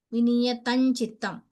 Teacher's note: अत्र परसवर्णः अनुस्वारानन्तरं चकार अस्ति अतः ञकार आगच्छति